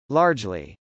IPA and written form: lˈɑrdʒli (largely)